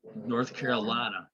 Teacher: in the rural part particularly they would make the I sound like the ah